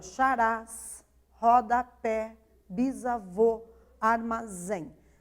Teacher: Armazém né então são palavras que nós consideramos oxítonas certo porque porque a sílaba mais intensa no momento que eu falo a palavra é a última de cada palavra